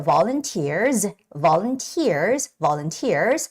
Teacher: the word volunteer has the stress on the e e vowel part